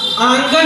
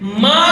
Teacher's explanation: बोलते समय हवा मुंह और नाक दोनों से एक साथ निकलती है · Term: अनुनासिक स्वर